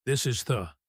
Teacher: The end of is connects to the start of the. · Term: linking